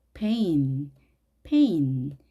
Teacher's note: 입술을 완전히 닫은 상태에서 팍 터트려주는 소리입니다.